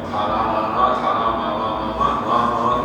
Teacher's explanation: 코에서 공기가 빠져나가면서 나는 소리지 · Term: 비음